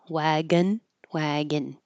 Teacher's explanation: this looks like o n wagon, but it's not an o. It's an i or an uh